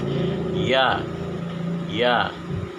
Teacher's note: tempat keluarnya huruf ya ini di tengah-tengah lidah dan langit-langit dengan nafas ditahan lunak dan suara tidak tertahan · Huruf ya makhrajnya atau tempat keluar hurufnya yaitu tengah-tengah lidah dengan langit-langit. Nah, jadi lidah yang bagian tengah dengan langit-langit.